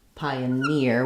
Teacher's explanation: So secondary stress on the pi syllable. Pioneer, it has the tense E sound